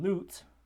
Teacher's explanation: the oo vowel in lute is a high, back, rounded, necessarily, tense vowel.